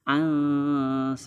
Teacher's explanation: nun mati disambut huruf sa itu adalah huruf ikhfa, sehingga hukumnya adalah ikhfa dan cara bacanya berdengung